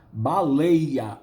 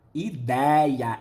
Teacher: Porque EI é fechado. Baleia, aí é EI, é fechado. Ideia, é aberto.